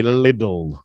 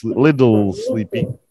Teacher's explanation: it's very very common that people will pronounce the t's like D's